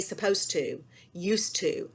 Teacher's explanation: And sometimes that E was pronounced, but sometimes it was elided because if you look at a word, for example, like supposed to, I was supposed to clean my room. Well, supposed has a D at the end of it, but we elide that D, we skip over it, we blend it into the T because those two sounds are so similar that we don't hear it most of the time when we say it.